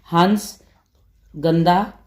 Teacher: अनुस्वार, स्वार मतलब वायु है जो वो केवल नाक से निकलेगी इसके अंदर।